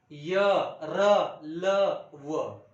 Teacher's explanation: केशव दामले यांनी म्हटलेलं आहे इशत म्हणजे थोडं आणि विवृत्त म्हणजे हे वर्ण उच्चारत असताना मुख विवर थोडसं उघड असतं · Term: इशत विवृत्त